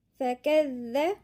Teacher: الذال هنا مشددة يعني ساكن ومتحرك، والذال من الحروف اللثوية